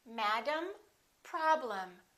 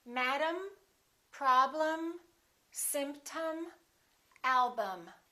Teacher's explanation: reduced madam look at the e m of the word problem the first syllable is stressed and the e m will sound exactly the same as the am of the word madam listen madam problem this is um and this is also um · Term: reduced syllables